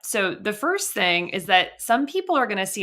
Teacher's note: That vocal fry, my goodness, I hope that nothing's wrong with her voice.